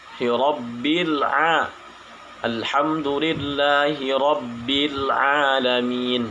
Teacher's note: huruf A itu tempatnya berada di tengah tenggorokan yang bagian tengah